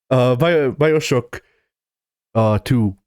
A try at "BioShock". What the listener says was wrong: Oh god, the way you're pronouncing it makes it sound like you aren't calling it BioShock. It sounds like you're calling it BioShook.